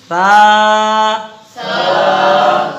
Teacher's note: سامنے والے اوپر کے جو دانت ہیں اس کے نچلے حصے سے لگانا ہوتا ہے، نرمی سے. بالکل نرمی سے.